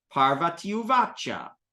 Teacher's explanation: a long I, when it meets up with an u, becomes a ya